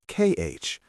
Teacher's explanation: When you have ch after the vowels a, o, or u, it makes a sound like kh, a harsh sound from the back of your throat. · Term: ch sound